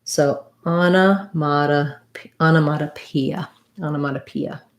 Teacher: going from e to a again there's another example of vowel to vowel gliding where i'm going to have this kind of a glide yeah sound because i'm moving from the e shape to the uh shape